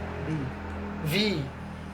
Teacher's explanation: Ujung gigi atas menyentuh bibir bawah. Dan agak panjang vowelnya, ya.